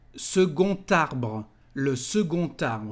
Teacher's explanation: We've got a letter D, but to make the liaison, the sound is like a T.